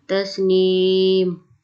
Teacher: وقف کریں گے تو میم کی دو جو زیریں ہم ساکن کر دیں گے